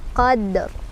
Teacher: Dalnya qalqalah sughra karena sukunnya asli ya, bukan karena disukunkan karena waqaf, asli. Dipantulkan ya, cara bacanya dipantulkan dan pantulannya kecil aja